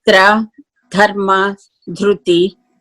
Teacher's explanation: when we pronounce tra, dharma, dhruti, our tongue touches the back of the teeth on the top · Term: retroflex sound